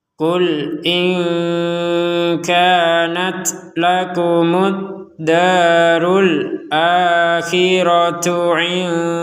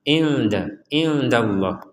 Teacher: Di sini ada nun sukun bertemu dal, maka kita membacanya dengan samar.